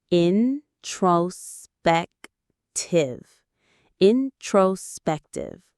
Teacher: The stress is on the third syllable. Spec. Introspective.